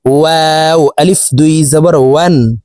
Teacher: ওয়াও হরফকে ২ ঠোঁট গোল করে ২ ঠোঁটের মাঝে ফাঁকা রেখে উচ্চারণ করে পড়ব।